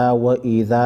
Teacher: و اذا الف مدہ کو ایک الف کی مقدار کھینچیں گے